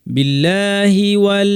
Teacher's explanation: হিতে টান নাই খেয়াল করতে হবে হি শেষ করে ওতে চলে যেতে হবে